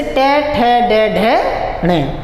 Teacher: जब भी हम टे वर्ग को बोलते हैं तो जो हमारी जीभ होती है वह मूर्धा अर्थात मसूड़ों को टच करती हुई चलती है